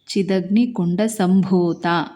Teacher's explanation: ಬ ದೊಡ್ಡ ಅಕ್ಷರ ಅಂದ್ರೆ ಮಹಾಪ್ರಾಣ ಇದನ್ನ ಒತ್ತಿ ಹೇಳಬೇಕು